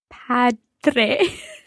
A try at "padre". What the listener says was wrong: Okay, it's a strong D in there, and just like dormire, padre. If you've ever done Spanish before, don't let that Spanish D influence your Italian. It's not padre, but padre.